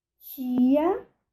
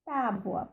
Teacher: A fricada acontece diante de I e o T ocorre diante das demais vogais.